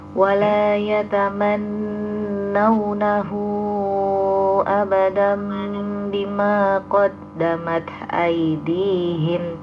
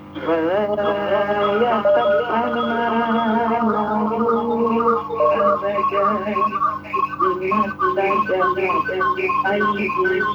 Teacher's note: Jadi nunnya ada tasydidnya, perlu ditahan dulu.